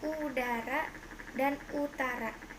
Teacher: vokal belakang tinggi atas bundar tertutup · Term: Vokal U